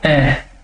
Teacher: आप इनका उच्चारण करके देखिए, जैसे मैंने बोला ए, फिर बोला आ, फिर बोला ई, फिर बोला ई, फिर बोला ए, फिर आई। तो जो मेरे होठ हैं वे गोलाकार आकृति में नहीं हो रहे हैं, इसलिए मैं इनको आवृतमुखी कहूंगा